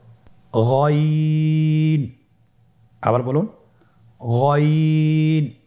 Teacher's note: গইনের মাখরাজ কোন জায়গায় আপনারা স্ক্রিনে দেখতে পাচ্ছেন, ছবিতে দেখা যাচ্ছে। গইন হরফটি উচ্চারিত হয় কণ্ঠনালীর শেষ ভাগ হতে। এখান থেকে উচ্চারণ করুন গইন।